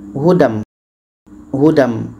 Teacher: Bunyi tanwin hilang. Jangan dibaca hudan. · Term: idgham bighunah